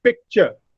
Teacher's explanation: They come one after the other in picture, ka and cha, but they do not form a cluster, and therefore they are called abutting consonants.